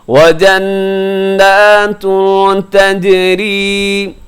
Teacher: نون مشدد کے اوپر غنہ کیجیے گا، اور یہاں آگے اخفا ہے.